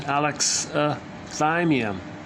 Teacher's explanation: So the stress is on the third syllable. So alexithymia is a 5-syllable word.